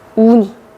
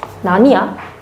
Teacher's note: 날아가죠. 리을이 다 날아가는 겁니다. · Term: 리을 탈락